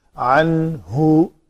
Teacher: نون ساکن کے بعد ہا ہے حروف ہلکی میں سے، تو نون کا اظہار ہوگا